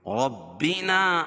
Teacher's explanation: من ربنا، من ربنا، یہاں ادغام بلا غنہ ہے، ادغام بلا غنہ، نون ساکن کے بعد ادغام بلا غنہ کے 2 حرف لام اور را میں سے یہاں را ہے، اور رائے مشددہ کے اوپر زبر ہے تو را کو پر پڑھیں گے